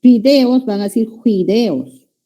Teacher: Ya, en la zona amazónica, alternancia consonántica de la F con la J